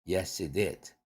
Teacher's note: H가 날아가니까 앞에 yes 할 때 s가 링크 되죠. he 할 때 이 모음 앞으로 연음되죠. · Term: H 딜리션